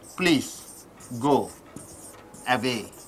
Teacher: Here it ends with a vowel, starts with a vowel. So how do you go? You connect with the W.